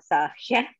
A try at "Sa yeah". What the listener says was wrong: Don't put the H on until the end. Sa yeah.